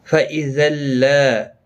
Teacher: تنوین کے بعد یرملون کا لام آیا ہے، ادغام ہوگا لیکن گنہ کے بغیر